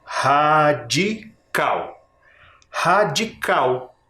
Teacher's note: observem a sílaba tônica radical radical também é terminada em L porém a sílaba tônica é a última Então ela é oxítona ela não é paroxítona por isso ela não recebe acento tá